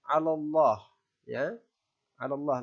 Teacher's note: cara membacanya dibaca tebal dengan bibir sedikit maju